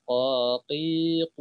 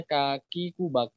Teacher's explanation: lidahnya pasti bergerak nempelin ke langit-langit yang belakang, paling belakang gitu ya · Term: huruf qaf